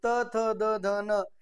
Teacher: दंते वर्ण कुठले, तर त, थ, द, ध, न हे म्हणताना आपल्या जिभेचं टोक, आपल्या जिभेचं पात वरच्या दाताच्या पाठीमागे जाऊन लागतं, त्याशिवाय त्याचा उच्चार होत नाही.